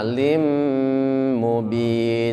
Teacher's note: lin ketemu dengan mim itu juga dengung, lama